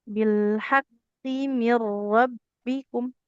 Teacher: karena qofnya kasrah tanpa ada huruf ya, tidak boleh panjang.